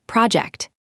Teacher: When it is a noun, as in a work project, stress the first syllable, project. The related verb can shift the stress, but today we need the noun.